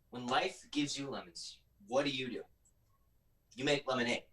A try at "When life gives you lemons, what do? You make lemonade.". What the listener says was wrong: And leave a bigger pause before what do? You're waiting for your audience to respond.